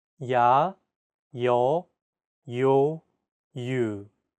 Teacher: there are also iotized vowel sounds in Korean this simply means that there's an added Y sound